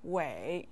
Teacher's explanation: Wei with the third tone means great.